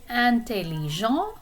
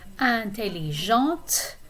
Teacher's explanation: You're pronouncing the T if it's the feminine form.